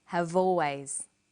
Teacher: in conversation we link the final consonant sound v with the initial vowel sound